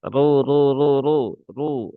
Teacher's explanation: ra ini dhammah maka dia tebal